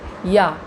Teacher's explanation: संघर्षहीन व्यंजन, उच्चारण के समय हवा बिना संघर्ष के बाहर निकल जाती है। या, इसमें कुछ भी आपको लगाना नहीं पड़ा, कुछ मेहनत नहीं करनी पड़ी।